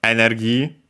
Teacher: the accent in Japanese is on the ne.